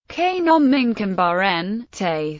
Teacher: emphasizing particle the intonation pattern of a typical Khmer declarative phrases a steady rise throughout followed by an abrupt drop on the last syllable